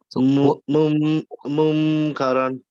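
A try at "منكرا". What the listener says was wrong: Yeah, munkaram, not mum. Don't close your lips because otherwise it becomes a meme. It's munkaram. Just keep your mouth normal. Instead of saying mun, we say munkaram.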